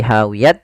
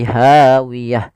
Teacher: ada huruf ta yang diwakafkan, maka kita ganti dengan huruf ha besar.